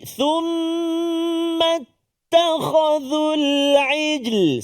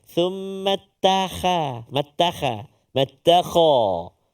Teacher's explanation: Kha bunyi tebal. Kalau tak dia tipis.